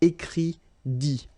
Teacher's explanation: remember, you put this T, you don't pronounce it